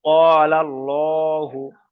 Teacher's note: আল্লাহর শব্দটাকে পুর করে পড়তে হবে, অর্থাৎ ল করে পড়তে হবে